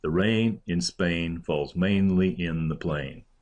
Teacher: The most common meter in modern English poetry is Iambic Pentameter, in which an unstressed syllable is followed by a stressed syllable with 5 beats to each line